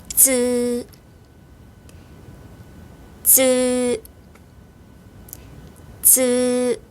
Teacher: 혀를 윗니 뒷부분으로 밀면서 발음합니다. 쯔, 쯔, 쯔. 혀가 윗니 뒷부분에 닿았다가 떨어지면서 발음.